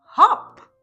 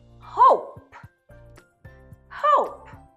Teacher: the short vowel sound O changes to the long vowel sound O. Put the sounds together, we have hope.